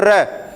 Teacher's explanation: रै का जब उच्चारण किया जाता है तो जीभ का, रै को बोल के देखो, रै जीभ के आगे वाले भाग में वाइब्रेशन होता है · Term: प्रकंपित और लुंठित